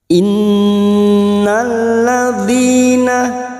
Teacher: Nun yang bertasdid gunnah musaddada kita dengungkan selama 3 harokat.